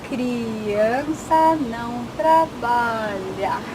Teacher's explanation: I heard that R, that rolled R, and the L at the end.